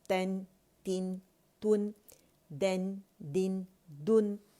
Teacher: नून साकिन बारीक होगा मोटे लेटर्स के साथ, ठीक है, उसे मोटा नहीं पढ़ेंगे